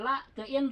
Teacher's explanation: Kalau in ee dipanjangin karena gunah dua sampai 3 harakat